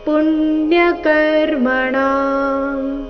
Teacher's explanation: ಪುಣ್ಯ ಪು ಮೇಲೆ ಆಘಾತ